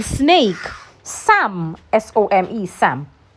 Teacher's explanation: The sound is a voiceless alveolar fricative. It means that the air is forced through a narrow passage between your tongue and your alveolar rig without vibration.